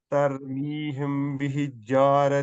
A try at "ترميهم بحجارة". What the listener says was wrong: बिहिज, बिहिज क्यों पढ़ रहे हैं आप? ये सिंपल है, बिहिजारतिम, हिजारतिम। आप पढ़ रहे हैं बिहिजारतिम, जीम पे कोई तशदीद नहीं है।